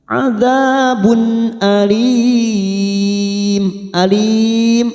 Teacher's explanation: Walahum adzabun, adzabun dza fathah bertemu alif 2 harokat, adzabun di tanwin bertemu hamzah, kita baca jelas idhar halqi. Adzabun alim, alim ada mat yang bertemu dengan huruf hidup dan dibaca waqaf, namanya mat arid li sukun. · alim ada mat yang bertemu dengan huruf hidup dan dibaca waqaf, namanya mat arid li sukun. 4 harokat kita panjangkan.